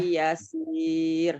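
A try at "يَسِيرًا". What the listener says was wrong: Gak boleh begitu. Siro kan Madiwad. lupa nih Madiwadnya Madobinya lupa.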